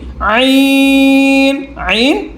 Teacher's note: আইন গলার মাঝখান থেকে হলকের মধ্যখান